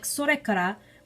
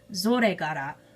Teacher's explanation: nearly all of its consonants are voiced, meaning that something like sorekara would be pronounced zoregara